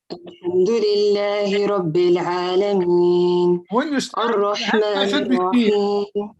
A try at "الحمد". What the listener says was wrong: When you start with this Hamza, it should be apparent. Alhamdu. Alhamdu.